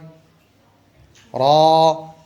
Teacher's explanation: জিহ্বার আগার পিঠ তার বরাবর উপরে তালুর সঙ্গে লাগিয়ে উচ্চারিত হয়।